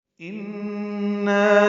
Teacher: ان میں نون مشدد بغنہ ہے اور نا الف مد ہے